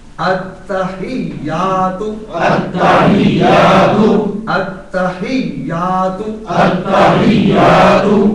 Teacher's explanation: تا کو بھی مشدد کرنا ہے اور یا کو بھی مشدد کرنا ہے